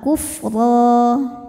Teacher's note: huruf ro dibaca secara tafkhim karena berharakat fathah tanwin ya maka rnya ini tebal